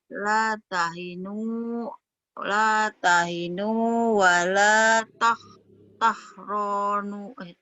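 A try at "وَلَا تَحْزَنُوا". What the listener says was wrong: Ada titiknya. Tahzanu. Zai. Tahzanu.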